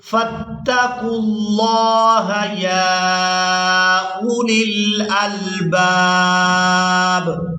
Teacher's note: یہاں پر جو آپ لوگ واو اور الف دیکھ رہے ہیں یہ بھی رسم الخط ہے, ان کو ادا نہیں کیا جائے گا. قاف کو لفظ اللہ کے نام کے ساتھ ملائیں گے